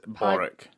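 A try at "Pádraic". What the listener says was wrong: Patrick. Or Podrick. Padraic. Podrick. It's with a P, though.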